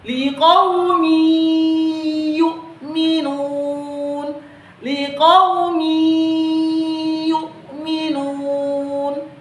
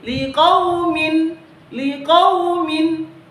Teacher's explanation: Jadi tidak dibaca lagi liqaumin, liqaumin, tetapi kita harus membacanya dengan cara kita meleburkan tanwin itu dan minnya dimasukkan ke huruf ya dengan cara didengungkan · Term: idgham bi gunnah